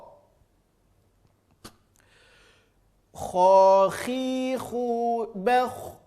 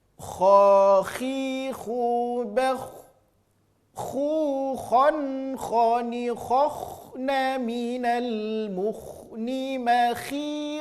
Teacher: Hurufnya keluar dari ujung tenggorokan. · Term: huruf kha